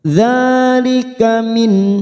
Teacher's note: nun sukun bertemu ain idhar halqi kita baca jelas tanpa mendengung.